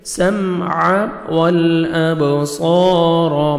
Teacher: با حروف قلقلہ میں سے ڈبل ساؤنڈ آئے گا. والابصار، صاد کو موٹا کر کے پڑھیں گے اور 1 سیکنڈ کھینچنا ہے.